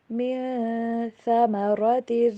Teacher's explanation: من ثمرات، را کو موٹا، ثا کو ادا کرتے ہوئے جو اوپر والے دانت ہے نا وہاں سے زبان کی نوک کو تھوڑا سا باہر رکھیں گے اور نرمی کے ساتھ ادا کریں گے